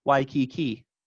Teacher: But it indicated to me, wow, we have preserved some of the vowel qualities of Waikiki. Because in English, we say it kind of even stressed